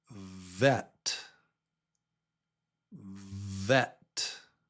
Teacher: Yep, it's got the teeth. The teeth tell you vet.